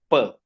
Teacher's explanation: For example, if you say P means both the lips must be closed tightly so that no air can express can escape and then the air pressure in the mouth should increase and suddenly the lips must separate and the air must come out with force